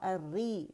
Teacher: ری اس میں تقریر کی مقدار تھوڑی سی کم ہوتی ہے